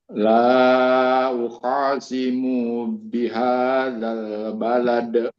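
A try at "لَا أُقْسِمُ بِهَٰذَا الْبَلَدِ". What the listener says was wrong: Mu-nya jangan panjang. Simu bihadzal balad. Aturannya jangan uqasi seperti panjang. Uqasimu.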